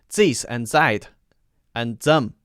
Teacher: So this is replacing the TH sound with the Z sound.